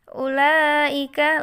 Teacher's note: karena ada mat tabi'i bertemu dengan hamzah dalam satu kalimat. Maka dibaca panjang 3 alif. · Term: mat wajib mutasil